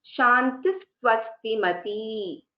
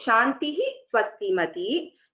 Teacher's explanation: If there is a Visarga and the Visarga is then succeeded by a Sakara, then it is Shantis Swastimati.